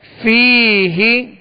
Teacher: یا مدہ ہے، ایک الف کی مقدار اسے کھینچ کر پڑھیں گے